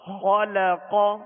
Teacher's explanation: خا اور قاف یہ دونوں حروف پر پڑھیں گے، موٹا پڑھیں گے، اس لیے کہ یہ حروف مستعلیہ میں سے، اور لام کو باریک پڑھیں گے.